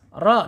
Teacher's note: Karena harokat doma. Ketika harokatnya doma atau fathah, ro ini harus dibaca tebal ya.